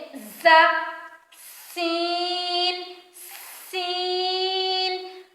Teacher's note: اسی طرح کچھ حروف ایسے ہیں جن کو بہت سختی کے ساتھ ادا کیا جاتا ہے، جن میں نرمی نہیں برتی جاتی۔ زا سین صاد یہ ایسے حروف ہیں جن کو سختی کے ساتھ سیٹی کی آواز کے ساتھ ادا کیا جاتا ہے، اور دونوں دانتوں کو جوڑ کر زبان جب دونوں دانتوں کے اوپر والے اور نیچے والے دانتوں کو جوڑیں، زبان جب ان دونوں دانتوں کے درمیان میں آ جائے تو ز سین اور صاد ادا ہوتے ہیں۔